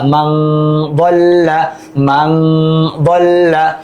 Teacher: এখানে মিম নুন জবর মান হওয়ার কথা ছিল, হবে মাং, কারণ নুন সাকিনের পর দদ আসছে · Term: গুণনা